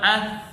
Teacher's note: ہم جب پڑھیں گے ثا تو اگر ہم اس کو ساکن کر کے اس کے شروع میں حمزہ لگائیں، حمزہ ثا زبر اث، آپ دیکھ رہے ہیں کہ ثا میں سانس جاری ہے جبکہ آواز کمزور بھی ہے اور آواز میں پستی بھی پائی جا رہی ہے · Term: صفت حمز